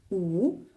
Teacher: щоб вимовити звук у губи займають положення трубочки